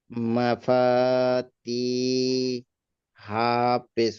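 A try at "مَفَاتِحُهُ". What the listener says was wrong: হু টান হয়ে যাচ্ছে। তিহু। তাড়াতাড়ি, তাড়াতাড়ি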